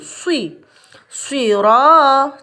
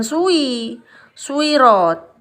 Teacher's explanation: Tapi di sini karena bibir monyong terlebih dahulu, jadi bagi yang masih kesulitan mengucapkan shod, maka kecenderungannya pasti akan bunyi sui gitu. Padahal sui langsung ke i, tidak ke u dulu. Tetapi memang bibirnya untuk memulai ini monyong dulu gitu. Swiro, ronya panjang sedikit, namanya ini numpang lewat ya, panjangnya namanya mat tabi'i.